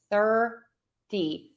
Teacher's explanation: So when you say a fast D, that flap T, you will say it a little bit further back. Your tongue is going to touch further back in the mouth. Same area-ish, but just a little bit further back.